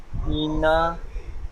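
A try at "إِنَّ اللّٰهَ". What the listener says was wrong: এখানে ইনা নয়, দেখেন হামজা নুন জের ইন, আর নুন লাম জাবার নাল, যেহেতু লামের উপরে তাসদিদ এসছে আর তাসদিদ ওয়ালা অক্ষরকে দুবার পড়তে হয়, একবার আগের সাথে মিলিয়ে আর একবার নিজে নিজে।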